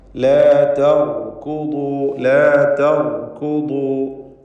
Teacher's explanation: നീളത്തിൽ മേലെ അണപ്പല്ലിനോട് ചേർത്താണ് ദ്വാദ് ഉച്ചരിക്കേണ്ടത്. നാവിൻ്റെ ഒരു പാർശ്വം, ഒരു സൈഡ് നീളത്തിൽ ആകുന്നു അതിൻ്റെ മഖ്റജ്.